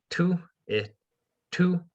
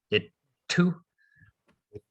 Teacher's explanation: you kind of just hold the position that you would make the t in for slightly longer